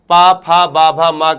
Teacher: प वर्ग का उच्चारण स्थान क्या होता है भैया? ओष्ठ होता है।